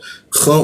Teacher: lalu masuk ke kha di atas jakun dia, agak ngorok dia